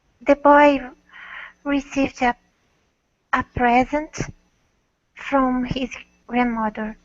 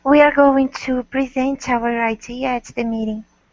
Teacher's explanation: Present as a gift, the first syllable is stressed, and present as a verb, the second.